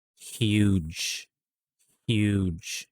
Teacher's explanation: so after the h sound i'm adding a y sound invisible y